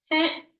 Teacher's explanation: if you're a guy, you typically say heh, like nasalized heh